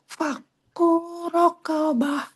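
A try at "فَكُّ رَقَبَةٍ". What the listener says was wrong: Kunya kepanjangan.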